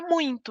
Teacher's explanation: Então, é muito comum a gente ver crianças em início de alfabetização escrevendo muito e introduzindo a letra N ali, porque é um I nasalizado